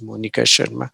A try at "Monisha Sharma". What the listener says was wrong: Monisha Sharma, not Monica, sir.